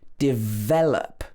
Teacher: First of all is the word develop. So this should be stressed on the ve part of the word